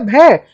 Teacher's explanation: भ तो हमारा महाप्राण होता है